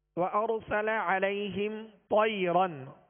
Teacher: طا کو پر پڑھیں گے اس لیے کہ حروف مستعلیہ میں سے ہے